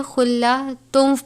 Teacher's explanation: خلاتوں، تنوین کے بعد واو مشدد ہے، واو مشدد حروف یرملون میں سے ہے، ادغام کا قاعدہ لگتا ہے، اس صورت میں ہم اس کو خلاتن نہیں پڑھیں گے بلکہ خلاتم پڑھیں گے، وہ بھی غنے کے ساتھ